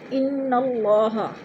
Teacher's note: اللہ پر پڑھا جائے گا اس لیے کہ اللہ سے پہلے لفظ نون کے اوپر زبر ہے تو اللہ کو پر کر کے پڑھیں گے